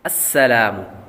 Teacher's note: السلام، یہاں پر سین پڑھیں گے، سین حروف سفیریہ میں سے صفیریہ میں سے ہے، یعنی سیٹی والے حروف میں سے ہے تو سیٹی کی آواز آئے گی